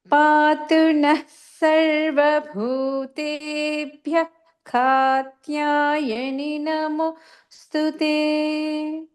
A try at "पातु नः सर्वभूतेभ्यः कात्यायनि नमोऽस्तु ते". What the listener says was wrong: So I can hear the pronunciation of visarga in bhutebhyah katyayani. But when you're pronouncing the naha, it still sounds a little bit like you're saying na. So it could just be that I'm not able to hear it over the Zoom connection.